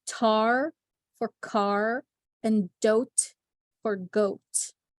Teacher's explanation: it is when the back sound is replaced by front sound